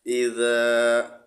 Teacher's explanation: ذال کو سختی کے ساتھ نہیں پڑھنا ہے، نرمی کے ساتھ پڑھنا ہے۔ ذال کے آگے الف ہے، الف کے ساتھ ملا کر ایک الف کے برابر کھینچ کر پڑھنا ہے۔ حمزہ زیر ای، ذال الف زبر ذا، اذا۔